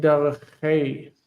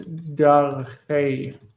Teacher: I know that it feels weird, but it's dareche with a soft kaf.